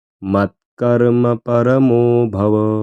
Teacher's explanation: मो थोडं दीर्घ स्वरात म्हणायचं